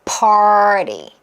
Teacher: 에다가 이게 또 왜 힘드냐면 party 하려고 그러면 조금 힘들어요. 이때 T 사운드도 RT 모음 구조는 뭐가 가능하냐면 flap T 처리가 가능해서 리을 사운드로 나면 편해요.